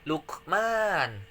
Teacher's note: qalqalah sugro karena ada qaf yang sukun